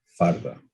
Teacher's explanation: rhoticization is associated with the south of the country, in which a lateral is turned into a tap